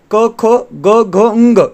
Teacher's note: पहले दो अघोष और बाकी के तीन जो होते हैं वो घोष होते हैं